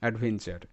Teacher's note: T U আর ই পাশাপাশি আছে অর্থাৎ এখানে এটা চার প্যাটার্ন তো এখানে টি এর উচ্চারণটা চ এর মতো অ্যাডভেঞ্চার